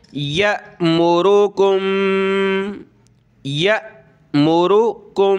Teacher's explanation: हमज़ा साकिना को पढ़ते वक्त हमने झटका देना होता है